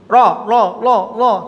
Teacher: Satu, pertama, ro kurang di dalam takrir atau getarnya